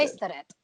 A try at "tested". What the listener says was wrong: just a thing on pronunciation. It's not so you want to make sure that you're distinguishing it from tasted. So tasting is like food. Tested. A eh. Tested.